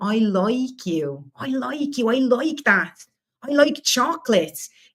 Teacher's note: Esse som de I vira som de oi.